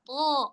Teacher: Jadi huruf to ini dia udah isti'la, tebal. Pangkal lidahnya terangkat. Ditambahin lagi itbaq.